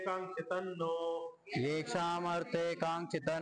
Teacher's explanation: एककांक्षित मध्ये पण नकार उच्चारण घेतोय थोडा